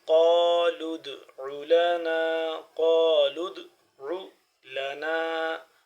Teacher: قاف کو موٹا کرنے کے پڑھیں گے، لام دال کے ساتھ مل رہا ہے